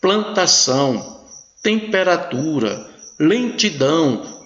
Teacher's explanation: Veja que a consoante nasal está apenas nasalizando a vogal. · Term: dígrafos vocálicos